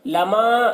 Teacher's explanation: مد منفصل کو 3-4 الف کے برابر کھینچ کر پڑھتے ہیں، اور ایک الف کے برابر بھی کھینچ کر پڑھنا جائز ہے۔